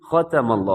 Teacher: ختم اللہ، خواہ موٹا ہے، تا باریک ہے، میم بھی باریک ہے، لیکن لفظ اللہ کو آپ نے موٹا پڑھنا ہے کیونکہ لفظ اللہ کے لام سے پہلے میم کے اوپر زبر ہے، اسے آپ موٹا پڑھیے گا۔